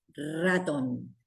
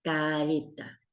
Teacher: La ra es igual que en el español, igual que en el castellano. ¿Cómo suena esta letra cuando empezamos una palabra? Suena fuerte, ratón. En el interior suena suave, careta